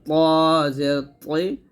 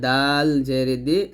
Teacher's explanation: এই তিনটা জিহ্বার আগা সামনের উপরের দুই দাঁতের গোড়ার সঙ্গে লাগবে এখানে ত মোটা হবে আর দালতা পাতলা হবে